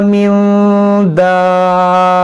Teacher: नून साकिन के बाद दाल है, यहाँ पर इख्फा होगा